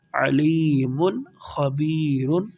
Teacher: خا ہے جو کہ حروف حلقی میں سے ہے، حلق سے ادا ہونے والے حروف میں سے ایک حرف ہے خا۔ یہاں پر ہم غنہ نہیں کریں گے۔